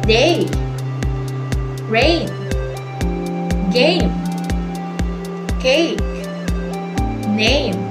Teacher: It starts with one vowel sound and slides into another.